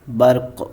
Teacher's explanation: تو ذرا دیکھتے ہیں اپنے اگلے لفظ کی مثال، یعنی 2 پیش کی مثال کو، برقن، آگے وقف برق۔ اب یہاں آپ نے دیکھا کہ ہم یہاں پہ قلقلہ بھی کر رہے ہیں برق، اور ساتھ میں علامت وقف کی بنیاد پہ ساکن بھی کر رہے ہیں۔